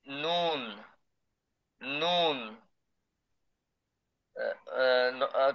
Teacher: জিহ্বার আগা তার বরাবর উপরের তালুর সঙ্গে লাগিয়ে